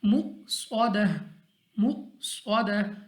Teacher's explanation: صاد ہمارے پاس مستعلی میں سے، میں نے اس کو موٹا پڑھنا ہے، یعنی منہ اور آواز کو کھول کر۔ تا ہمارے پاس ہے تو تا ہمارے پاس وقف میں گول ہا کے ساتھ تبدیل ہو جائے گی۔